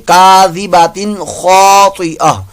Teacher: यहाँ पर तनवीन के बाद खौ आ गया, इजहार का कायदा गुन्ना नहीं करेंगे